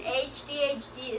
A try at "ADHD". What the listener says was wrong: You said HH. You said AHHD.